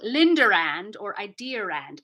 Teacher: even if there's no R there we'll put an r in there to create a pause · the r's are there in British English after vowels as long as there's another vowel coming after that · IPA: /ai.DI.ə.rand/